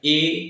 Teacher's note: मुख द्वार आधा बंद रहता है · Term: अर्ध समृत